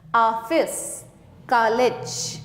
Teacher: आ, बड़ा आ, इसके ऊपर बिना बिंदी वाला जब एक चांद बनता है, यह ध्वनि अंग्रेजी भाषा से हिंदी भाषा में आई है। यह आ तथा ओ के बीच की ध्वनि है। इसका प्रयोग अंग्रेजी शब्दों के शुद्ध उच्चारण के लिए किया जाता है।